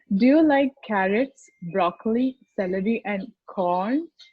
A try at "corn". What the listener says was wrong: Try going down slightly lower to really set off that corn. Do you like carrots, broccoli, celery, and corn? Corn.